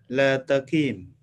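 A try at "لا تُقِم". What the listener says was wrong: Yaknya harokatnya domah ini. La tukim.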